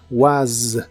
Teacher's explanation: Was termina con el sonido vibrante de la S